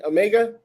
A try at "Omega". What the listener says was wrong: With two E's. Two E's with the long thing over top. Not the short vowel, the long vowel.